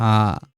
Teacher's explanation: আ, এটা হলো বিবৃত। পুরো মুখটা খুলে ফেলতে হয়